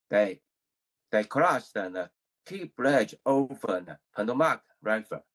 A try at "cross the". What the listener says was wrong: Good. But I think you put these two words together.